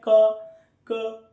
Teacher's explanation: तालु के ऊपर वाला हिस्सा है, उसको जीभ टच कर रही है। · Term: स्पर्श व्यंजन